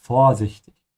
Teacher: I emphasize the O here, vorsichtig.